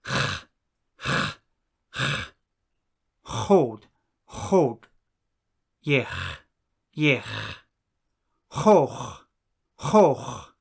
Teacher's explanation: The letter H is something like the ch in the Scottish word loch or the German word Bach. It should sound almost like you are trying to clear your throat.